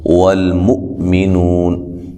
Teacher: حمزہ ہے جھٹکے سے ادا کریں گے